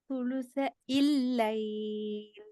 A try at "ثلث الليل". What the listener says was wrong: நீ நாக தூக்கல. நாவினுடைய நடுப்பகுதியை தொண்டையில மேலுக்கு தூக்குங்க. தொண்டை மேல பட்டாலும் பிரச்சனை இல்லை. ஈ மேல படணும். மேல் அன்னத்துல படணும்.